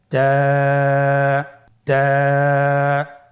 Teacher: তায়ের মাখরাজ কোন জায়গা থেকে? জিহ্বার আগা সামনের উপরের 2 দাঁতের গোড়ার সঙ্গে লাগিয়ে উচ্চারিত হয়।